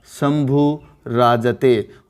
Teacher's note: ये ऊ है, ह्रस्व स्वर है, बाद में विसर्ग आ रहा है, बाद में रे आ रहा है, तो यहाँ ह्रस्व ऊ है उसके स्थान पे क्या हो जाएगा? दीर्घ हो जाएगा